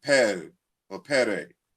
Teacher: we can see in French the dropping of the intervocalic T